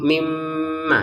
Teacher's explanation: Yukhrij lana mimma tumbitul ardu mim baqliha. Mim bertasydid kita dengungin 2 harokat ya. Mimma. Jadi jangan saudara mimma gitu ya. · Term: Dengungan